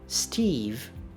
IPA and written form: stiv (Steve)